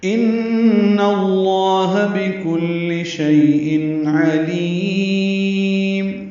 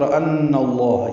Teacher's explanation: ان میں نون مشدد پہ غنہ ہے، نون کو لام سے ملانا ہے